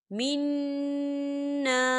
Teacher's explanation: یہاں پر نون مشدد ہے تو یہاں پر غنہ ہوگا، اور الف مدہ بھی ہے، خالی الف سے پہلے زبر ہے، تو ہم اسے دو حرکت کی برابر کھینچ کے پڑھیں گے۔